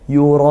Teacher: Hamzah dari pangkal tenggorokan, makhrajnya ditunaikan. Mat arid lisukun, boleh 1, boleh 2, boleh 3 alif, seperti itu.